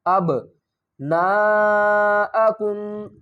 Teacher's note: با ساکن ہے تو یہاں پر کیا کریں گے، قلقلہ کریں گے، با کو ہلا کر پڑھیں گے